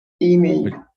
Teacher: So the E gets the emphasis in English.